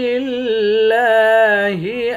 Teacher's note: لفظ اللہ کلام کے اوپر کھڑا زبر ہے، اس کو ایک الف کے مقدار کھینچ کر پڑھیں گے